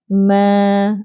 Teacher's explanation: Mim makhrajnya ialah syafatan, bibir, mulut, iaitu kedua bibir atas dan bawah dirapatkan secara sederhana.